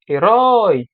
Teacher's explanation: veja que a parte mais forte é o roi observa ela é uma oxitona a última ela é a mais forte e ela termina no ditongo Oi duas vogais juntas lembra do · veja que a parte mais forte é o rói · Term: oxítona